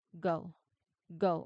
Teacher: if you put your hand in your throat while you say the word go, you should feel a very clear deep vibration that coincides with the release of the consonant. If your throat is quiet, you're accidentally making the K sound instead. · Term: voiced sound